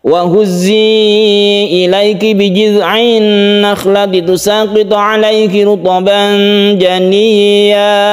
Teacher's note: to, ro yang tebal, ru dimecucukan ya bibirnya itu, kemudian diikhfakan, kemudian ditasydidkan ya yang tidak panjang.